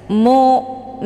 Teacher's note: hamzah sukun dengan cara ditekan kemudian bacaannya tipis